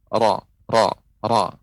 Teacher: Namun ini ada hambatannya karena ada lisan ra. Ketika orang mengucapkan ra, mesti dia akan menggunakan lisan, ya, lisan kita yang bergetar. Ra, ra. Demikian. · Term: inhiraf